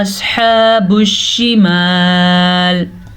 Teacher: صاد کو پر پڑھنا ہے کیونکہ صاد بھی حروف مستعلیہ میں شامل ہے